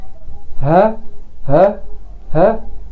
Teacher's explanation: كانك بتنطق صوت الهمزه ولكن بدون اهتزاز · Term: الجلوتال